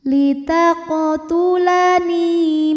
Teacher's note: Mad Thobi'i dahohiri karena ada ya sukun yang didahului harakat kasrah maka huruf nun kita panjangkan dua harakat